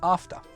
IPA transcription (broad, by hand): ɑːftə